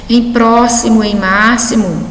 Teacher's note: A letra X aí representando o som SS